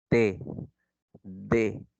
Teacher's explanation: En el caso de los dentales, te dice que la lengua choca contra los dientes incisivos superiores